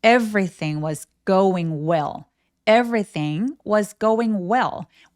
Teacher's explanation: 우리 말에 어처럼 들리는게요 음절 맨 끝에 오는 L들의 특징이에요. 얘네들 이름을 다크엘 L이라고 하는데요.